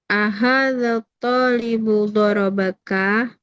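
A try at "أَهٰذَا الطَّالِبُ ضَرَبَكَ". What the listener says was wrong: haza nggak ada alif lam kan? Ahaza. Ahaza.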